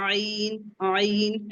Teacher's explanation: अब हमारा ऐन का मखरज भी वसतुल हलक से है